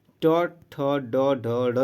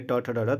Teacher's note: मूर्धा कंठ के थोड़े से ऊपर का स्थान होने वाला उच्चारण जो है वो मूर्धन्य कहलाता है